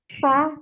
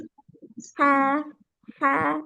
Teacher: samarnya suara pada pendengaran tidak ada getaran pada keduanya serta disertai banyaknya udara yang mengalir saat diucapkan hurufnya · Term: Hames